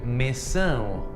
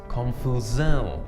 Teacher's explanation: Now notice that this SAO is quite nasal sounding.